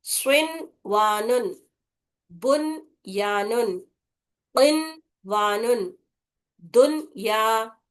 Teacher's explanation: نون کا صاف اور واضح طریقے سے نون کو پڑھنا، غنہ نہیں کرنا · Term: اظہار مطلق